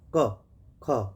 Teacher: यानी अघोष का मतलब हुआ जिनको हम बोलेंगे और वायु बहुत तेज़ी से नहीं निकलेगी, यानी हमारी जो स्वर तंत्रियाँ हैं वो उनमें कंपन नहीं होगा, ठीक है, तो उनको अघोष बोलेंगे